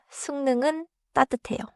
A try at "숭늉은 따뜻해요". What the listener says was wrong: 좋습니다.